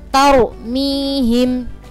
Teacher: Itu ada ro' sukun, sebelumnya ada huruf yang berharokat fathah, maka ro' sukunnya nanti dibaca tebal.